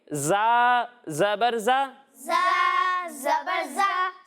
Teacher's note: جب ہم زا کی ادائیگی کریں گے تو اس میں سیٹی کی آواز آئے گی، یعنی اسے پڑھیں گے زا زبر زا۔